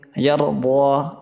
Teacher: را ساکن سے پہلے زبر ہے، را کو پر پڑھیں گے